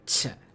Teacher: aspirated, which means there's like a breath in between